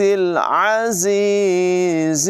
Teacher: عین کی آواز حلق کے درمیان والے حصے سے ادا ہوگی